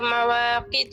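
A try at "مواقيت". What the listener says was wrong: دوبارہ سے یا مدہ ڈراپ ہو گیا. مواقیت لمبا کریں گے تھوڑا سا. دیکھیے نا مواقف زیر یقی مواقی.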